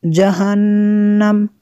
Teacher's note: نون میں شدد ہے، یہاں پہ غنہ کرنا ہے